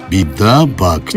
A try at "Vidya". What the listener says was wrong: No, Vidya. V, not a B.